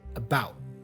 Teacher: The T for about here is a stop consonant or stop T. We say about.